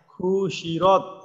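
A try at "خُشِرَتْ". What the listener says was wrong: হুশিরত, এখানে হাটাকে লম্বা করে দিন।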